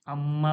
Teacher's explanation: আন্না বলতে গেলে দেখুন নাকে আওয়াজটা যাচ্ছে, আর আম্মা বলতে গেলেও নাকে আওয়াজটা যাচ্ছে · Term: মিম গুন্না